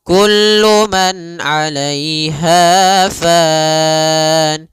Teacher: Pada lafal kullu man di sini ada izhar halqi, yaitu suara nunnya dibaca dengan jelas ketika bertemu dengan huruf ain. Maka kita namakan dengan bacaan izhar, ya, izhar halqi.